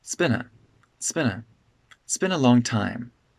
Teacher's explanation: This I at the beginning of this sentence kind of gets de-stressed, so we kind of begin the sentence with ts.